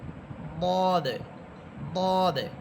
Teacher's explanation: আওয়াজটা মোটা করে বলবেন মুখ ভরে উচ্চারণ করবেন উপরের দিকে একটু ধাক্কা দিয়ে বলবেন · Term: মোটা হরফ